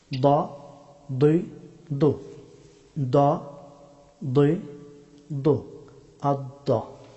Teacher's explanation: জিহ্বার বাম অথবা ডান কিনারা, আদ্রাসে ওলিয়া, উপরের চর্বণ দন্তপাটির মূল, এইখান থেকে দদ হরফটি উচ্চারিত হয়।